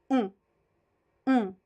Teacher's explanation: there is no M or n it's a nasal o